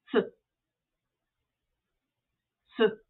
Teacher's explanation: Hardly anything came out, right? Technically, there's a vowel there. Ah, you barely pronounce it.